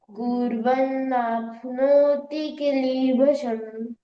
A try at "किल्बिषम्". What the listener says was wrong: कीली बसम नहीं है, ये ल और ब साथ में मिलके ये बी बोला जाएगा। किल बिशम, किल बिशम, किल बिशम।